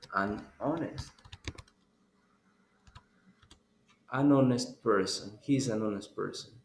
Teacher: But if you say this word, honest, you don't pronounce the H. In the word honest, you don't pronounce the H.